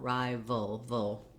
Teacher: making sure the back of the tongue is down for that schwa and then the tip the tongue lifts for the l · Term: dark l